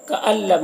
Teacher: کألم، یہاں پر نون ساکن کے بعد لام حروف یرملون میں سے، تو نون کو لام سے ملا کر بغیر غنہ کے پڑھیں گے، اس کو ادغام تام کہتے ہیں۔